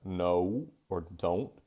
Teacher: it's always going to become a diphthong at the end shifting towards an u sound